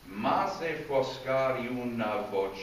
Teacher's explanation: I have to make the elision in the I to the U.